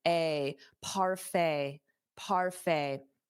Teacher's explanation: Notice that pronunciation, the T is not pronounced. So it ends on a fay, a parfait, parfait.